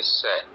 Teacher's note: ये दंतव्य है, यानी दांत के पास जीभ आती है